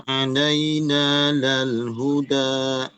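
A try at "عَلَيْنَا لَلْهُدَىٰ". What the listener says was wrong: Tinggal hamzahnya, Pak ya. Hamzah di belakang masih nyempil-nyempil ya, masih apa namanya, sering ikut.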